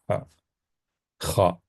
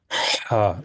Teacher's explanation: کیونکہ ہا جو ہے یہ حلقی ہے حرف، تو اس کو اور گہرے طریقے سے اس کو ادا کرنا